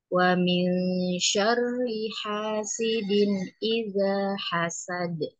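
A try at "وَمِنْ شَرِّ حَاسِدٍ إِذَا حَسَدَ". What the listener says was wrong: Nah, hati-hati ya yang ini tadi jangan sampai dia ada jeda. Wa min syarri hasidin idza din idza tapi dia terus hasidin idza idza in idza gitu.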